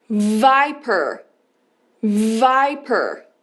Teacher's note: Som do V, você precisa emitir essa vibração na garganta porque ele é um som vozeado.